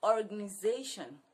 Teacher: The stress is on the Z.